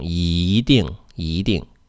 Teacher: When E comes before a fourth tone character, E changes to a second tone.